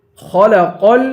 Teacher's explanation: خا کو پر پڑھیں گے، قاف کو بھی پر پڑھیں گے اور قاف کو لام سے ملائیں گے